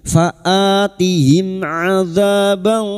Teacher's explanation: Sekarang di sini kita wasol mim sukun bertemu ain. Mim sukun dibaca jelas tanpa mendengung.